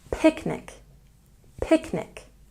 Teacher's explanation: Picnic, we also stress the first syllable.